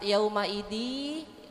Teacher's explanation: Bacaan idgham bi gunnah. Kita masukkan kepada huruf ya tapi dengan mendengung, lain dengan ikhfa ya Bu ya.